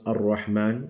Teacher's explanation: You don't pronounce the lam. Those are shamsi letters. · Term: lam shamsiya